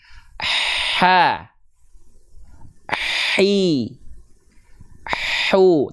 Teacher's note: Teman-teman bisa merasakan nafasnya ngalir, tapi di saat yang bersamaan mengalir juga suaranya. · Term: mengalir nafas